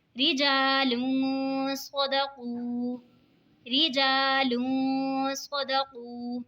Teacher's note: دو پیش کی تنوین کے بعد حروف اقفا کا صاد آ رہا ہے تو اقفا ہوگا یعنی گنہ کر کے پڑھیں گے